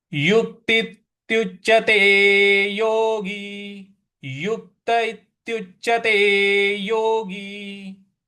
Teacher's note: यहां पर जो आधा च है उस पे हमें आघात देना है, बल लगाना है।